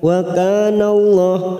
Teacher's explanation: lam jalalah yang didahului fathah kita baca tafkhim